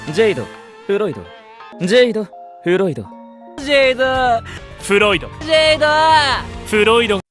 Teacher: Jade's and Floyd's names sound like they end in o